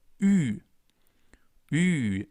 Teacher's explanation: The formation is basically the same. We start with the U, the German version of U, U, and then we round our lips even more and place the tongue a little more at the front. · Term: the U with the two dots on top